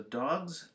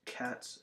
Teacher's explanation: dogs is a z sound cats is an S sound